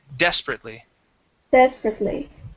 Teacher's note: So the stress is at the very beginning.